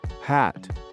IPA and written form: hæt (Hat)